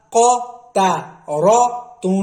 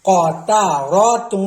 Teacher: بیچ والی تا موٹی نہیں کرنی